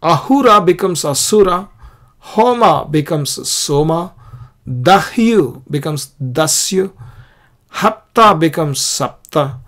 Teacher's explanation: the H sound is turned into S sound in Sanskrit